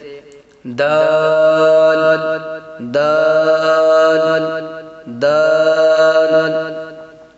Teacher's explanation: زبان کی نوک جب اوپر یعنی سامنے والے دونوں دانتوں کی جڑ سے لگے تو اس سے دال ادا ہوتا ہے